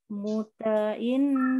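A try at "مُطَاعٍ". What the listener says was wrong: Ta-nya dua. Kenapa? Karena setelah huruf ta ada alif. Panjangnya dua ya. Muto.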